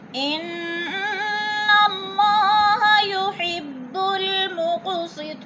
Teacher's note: انہ کی نون مشدد، سختی سے جما کر پڑھیں گے